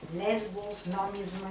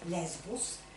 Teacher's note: гръцката сигма в някои позиции се озвучава комбинаторно